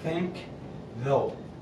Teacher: your tongue stays in the exact same place doesn't move